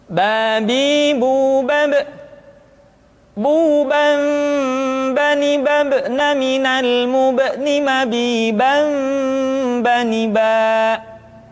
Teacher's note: huruf ba dikeluarkan dengan cara merapatkan kedua bibir kita